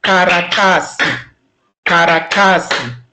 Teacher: In this word, karatasi, you will hear that ta is a long sound, kara and si are short sounds. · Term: long and short sounds